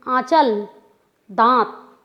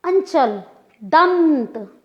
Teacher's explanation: नाक का प्रयोग ज़्यादा हुआ, लघुता नहीं है, खींच के बोलना पड़ा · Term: अनुस्वार